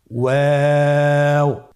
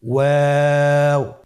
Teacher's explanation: আপনারা আমার সাথে বলুন ওয়াও ওয়াও। 2 ঠোঁট গোল করে মাঝখানে ফাঁক রেখে হরফটি উচ্চারণ করতে হবে।